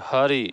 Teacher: अगला है ह्रस्व ई दीर्घ, ह्रस्व उ री के पूर्ववर्ती वर्ण का स्वर भी बोलने में तन जाता है, जैसे हरि, ह तन जा रहा है, इसलिए यहाँ पर ह पर बलाघात है।